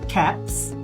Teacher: the preceding sound P is a voiceless sound. So the following sound should be a voiceless sound too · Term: progressive assimulation